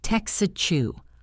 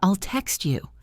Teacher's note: Often the T at the end of text blends with the Y in you to make a chi sound. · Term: native blend